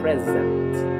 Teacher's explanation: S entre dos vocales, se pronuncia con la S dura, la S zumbada.